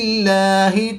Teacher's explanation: جلالت اللہ عز و جل کے لام سے پہلے حرف کے نیچے زیر ہے تو یہاں پر اس لام کو پر نہیں بلکہ باریک پڑھیں گے۔